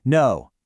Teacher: You would likely respond with a perfectly flat, robotic, completely uninvested no. The total lack of pitch movement signals your total lack of interest or engagement in the process. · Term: level tone